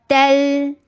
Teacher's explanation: تل تا سختی کے ساتھ ادا ہوگا اور لام کے پر توسط کیجیے